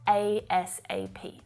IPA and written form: eɪ es eɪ piː (ASAP)